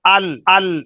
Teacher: کسی لفظ کے مخرج کو معلوم کرنے کا طریقہ یہ ہوتا ہے کہ اس پر جزم لگا دو، اس سے پہلے حرکت دے دو، اس طرح کہ یہاں ہے حمزہ لام زبر ال، تو جہاں زبان ٹکی ہوئی ہے یہ اس کا مخرج ہے۔ تو جب آپ ال کہیں گے تو آپ کی زبان بالکل سامنے دانتوں کی جڑوں کے ساتھ جا کر ٹکرائے گی